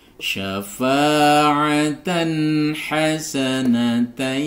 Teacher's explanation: fathah diikuti Alif Atan Atan [Musik] hasanatai Tan fathatain bertemu atau tanwin bertemu dengan ha maka dibaca Idhar halq dibaca jelas jadi jangan sampai dibaca dengung syafaatan hasanatai Tan jangan didengungkan ya syafaatan ha salah jadi dibaca · tanwin bertemu dengan ha, maka dibaca izhar halki, dibaca jelas, jadi jangan sampai dibaca dengung.